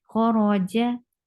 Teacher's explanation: Kha is heavy. Ra is heavy here because it is with fatha. Whenever ra is with fatha, dhamma, it will be heavy.